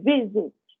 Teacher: Agora, se eu tiver consoante, vogal, consoante, mas não for na sílaba tônica, por exemplo, visit, visitar, a sílaba tônica é a primeira